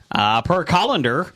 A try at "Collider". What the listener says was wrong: Where did the N come from? From Colander? Where's the N? It's not existent.